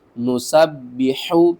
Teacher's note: حا کو آپ نے حلق کے درمیان والے حصے سے ادا کرنا ہے، با کو ہم نے 2 بار پڑھنا ہے۔